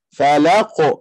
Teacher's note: fa lembut lam lembut qaf tebal